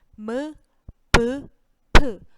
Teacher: 모두 입술을 이렇게 다물었다가 터뜨리면서 나는 소리가 되게 되죠